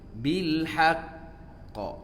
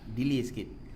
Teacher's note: Waqaf bil haqqi kena qalqalah, dia panggil asyaddu qalqalah, dia ada sikit delay lah.